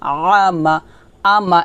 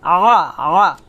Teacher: আল্লাযী আতআমা, আইন জবর আ, মিম জবর মা, আমা, আমা এটা হবে না, হবে আ, আ, আ। আইনটা গলার মাঝখান থেকে চিকন করে কিংবা চাপ দিয়ে নিয়ে আসবেন